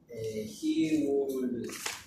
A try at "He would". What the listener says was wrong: Pronunciation, remember? Don't pronounce the L. Don't pronounce the L.